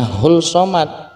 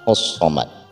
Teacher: Jadi jangan sampai kita membacanya hul somad, tapi yang benar adalah hus somad, dikarenakan alif lam di situ adalah idgham syamsiah, yang artinya langsung dimasukkan ke huruf-huruf syamsiah